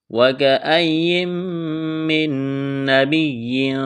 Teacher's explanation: وَكَأَيٍّ یا کے اوپر تشدید ہے، تھوڑی سختی کریں گے۔ نون ساکن کے بعد میم مشدد ہے، ادغام کریں گے، نون کا میم میں غنہ کریں گے۔ یہاں بھی نون ساکن کے بعد نون ہے تو یہاں نون کا نون میں ادغام کریں گے۔